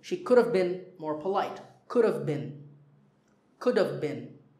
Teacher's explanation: with all of these should've could've would've when we speak we don't say have